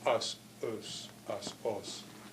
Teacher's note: Yeah, the glottal stop, and the second consonant, which is S, and then the vowel changes from U to a short ah there